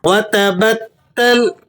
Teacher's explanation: تا مشدد ہے تو سختی سے پڑھا جائے گا